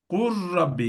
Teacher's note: lamı tamamen rayya dönüştürüyoruz ra'nın içine atıyoruz artık lam yok ra var Dolayısıyla şeddeli için bir elif miktarı da tutacağız ki iki harf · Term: tam idgam